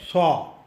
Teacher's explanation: स्वाद जो है वो कड़क और सख्त अक्षर है और वो मुंह के अंदरूनी भाग से निकलता है। इस वजह से हम अंग्रेज़ी एस, हिंदी स और तमिल स स्वाद के साथ बराबर के तुलना में नहीं रख सकते।